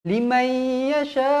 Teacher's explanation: Mesti dibaca dengung dua harakat. Masukkan dekat huruf ya tu. Limai tak nak liman yasha, salah. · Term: idgham ma'al gunnah